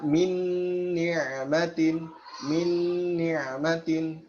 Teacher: Jadi kita langsung bersiap kepada huruf nun yang kedua. Tidak lagi mengucapkan nun yang pertama. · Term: idgham kamil bi gunnah